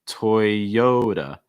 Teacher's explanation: Stressing that second syllable, the yo. Toyota. Notice that T takes on a fast D sound.